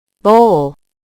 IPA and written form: boʊl (Bowl)